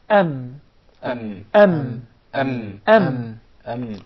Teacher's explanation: The ميم is articulated by closing the two lips together.